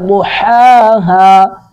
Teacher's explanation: ضاد کو پر کریں گے اور حا کو ادا کریں گے